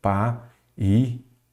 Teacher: Olha aqui, vogal, vogal, segunda vogal, tônica de hiato